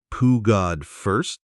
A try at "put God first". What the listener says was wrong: Almost. Try to link the T in put to the G, poo God first.